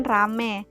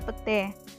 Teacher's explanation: pengucapan terhadap bunyibunyi diftong kata ramai diucapkan rame petai diucapkan pete perubahan ini terjadi pada bunyi vokal rangkap ai ke vokal tunggal e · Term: monoftongisasi